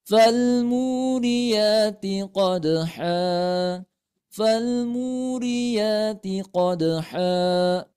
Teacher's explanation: itu mad thi'i Ya jangan lebih daripada dua harakat